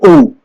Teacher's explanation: आप बोलेंगे ऊ, देखिए ऊ के उच्चारण में होठों की आकृति गोल हो जाती है, तो ये हो जाएंगे दोनों ऊ हो जाएंगे वर्ताकार स्वर।